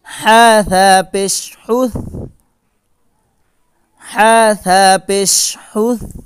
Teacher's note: এখানে প্রত্যেকটি হা কণ্ঠনালীর মধ্যখান থেকে উচ্চারিত হয়।